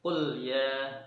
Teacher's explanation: Tidak boleh ada pantulan qul ya, enggak boleh. Tapi harus qul ya, berhenti di huruf lamnya. Tidak boleh ada tawalul di situ. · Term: lam yang sukun